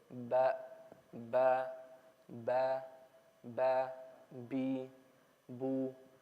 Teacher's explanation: it only comes from closing the lips together